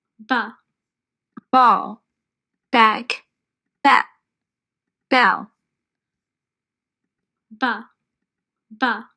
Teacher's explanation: ஸோ உங்களோட lip movement பார்த்தீங்கன்னாக்கா உங்களோட உதடுகள் முதல்ல க்ளோஸ் ஆகிருக்கும். க்ளோஸ் ஆகிருந்து ப அப்படி ஓப்பன் ஆகும். ஸோ அதுதான் இங்கே இப்படி இப்படி க்ளோஸ் பண்ணுற மாதிரி கொடுத்துட்டு அதுக்கப்புறம் இந்த காற்று வெளியே வர மாதிரி அப்படி ஓப்பன் பண்ணுற மாதிரி காமிச்சிருக்காங்க.